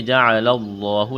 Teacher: لفظ اللہ کے نام سے پہلے کیا ہے؟ زبر ہے. لفظ اللہ کے نام کو موٹا کریں گے. جیم اور عین اس کو بغیر کھینچ کے پڑھنا ہے.